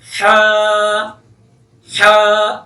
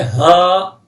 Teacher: یہ ہا جو ہے یہ حلق سے نکلتی ہے